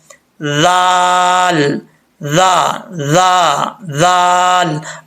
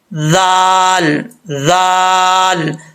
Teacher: जुबान की नोक, ये जो जुबान का आपका फ्रंट वाला हिस्सा है, आखिरी जिस जहाँ पे जुबान ख़त्म हो रही है, वो वाली जगह जो है, सिरा जो है जुबान का, अपने ऊपर वाले दांतों के निचले हिस्से से लगाएंगे तो ये दाल पढ़ा जाएगा बगैर सीटी के